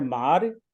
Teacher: मार रा पर छोटा सा हल्का सा ई का स्वर है, मारी नहीं है, ता है मार।